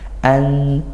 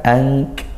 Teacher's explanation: nun sukun bertemu huruf ta, makhrajnya ta di ujung lidah bertemu gusiki dari atas. Ant, nah, bukan ang. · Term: ikhfa haqiqi